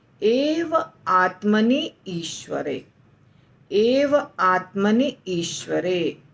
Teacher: तो आत्मनि में छोटी ई है, हर्स्व ई, और ईश्वरे में बड़ी ई है। तो दोनों का जब संधि होता है तो आत्मनि का छोटी ई बड़ी ई बन जाता है ईश्वरे के ई के साथ मिलके, तो हो जाता है एव आत्मनीश्वरे, नीश्वरे यानी दीर्घ ई, बस इतना होता है।